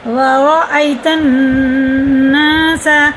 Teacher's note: را یہ بھی پورے، اور الف سے یا ساکن سے پہلے زبر ہے تو حرف لین ہے، اسے مجھول آواز سے بچائیں گے، بالکل بھی نہیں کھینچ کے پڑھیں گے